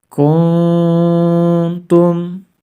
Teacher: nun sukun nya harus dibaca samar-samar diikuti dengan dengung sebanyak dua sampai dengan tiga harokat · yang kita baca samar-samar adalah nun sukunnya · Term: ikhfa